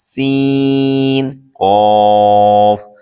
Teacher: سین زبان کی نوک اوپر کے دونوں دانتوں کے اندرونی کنارے سے ادا ہوتا ہے